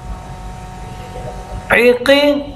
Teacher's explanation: आइन तो आपको पता है वस्ते हलक से है